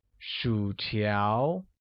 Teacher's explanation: French fries translates as 薯条, which uses a falling rising tone on U and a mid-rising tone on A